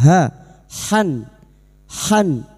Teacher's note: huruf ha makhrajnya ada pada wastul halqi yaitu tengah tenggorokan dan huruf ha memiliki sifat hames dan rakhawah mengalirnya nafas dan suara